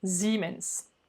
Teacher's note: Un S en début de mot, suivi d'une voyelle, se prononce Z.